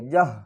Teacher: ہا کو حلق کے نیچے والے حصے سے ادا کریں گے